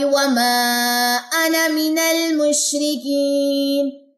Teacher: الف سائلنٹ ہے صرف نون کی زبر پڑی جائے گی